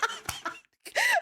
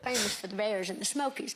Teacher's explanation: I was told to listen for a sh sound on the S's.